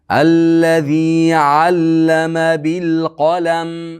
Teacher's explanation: Qo yug'on lam ingichka mimni sukuni bilan to'xtaymiz.